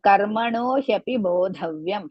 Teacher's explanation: Karmano, ka is hrisva, ra half, ma hrisva, no dirgha, hyapi, ha, and ya together, hrisva and pi, hrisva, bo dirgha, but is not mahaprana.